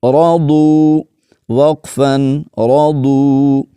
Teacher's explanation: را زبر را، ضاد، واو پیش دو، رضو وقفا رضو. یہاں پر را کو بھی موٹا پڑھنا ہے اور ضاد کو بھی، کیونکہ یہ حروف مستعلیہ میں سے ہے ضاد